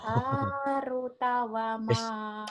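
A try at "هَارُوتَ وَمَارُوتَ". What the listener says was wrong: Ru-nya panjang. Ru-nya panjang.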